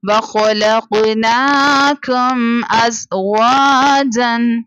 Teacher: میم ساکنہ کے بعد نہ با تھا نہ میم تھا، اس کے علاوہ الف یعنی حمزہ لیٹر تھا، ہم نے یہاں پر اظہار شفوی کیا یعنی بغیر غنہ کے